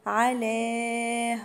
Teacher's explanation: مد 4 حركات، ده مد جائز منفصل